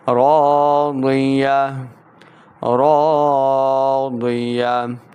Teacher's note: اس تا کو ہا میں بدل کر پڑھنا ہے اور ہا کو ساکن بھی کریں گے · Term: وقف